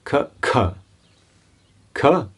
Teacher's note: if you put the hand in front of the mouth you don't feel much breath